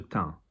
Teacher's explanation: Teint, nasal because there's an N there and there's not a consonant, there's not a vowel after the N.